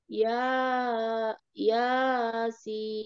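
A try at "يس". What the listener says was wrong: Ya-nya jangan panjang. Yasin. Ya-nya satu, dua harokat saja, satu ayunan ya.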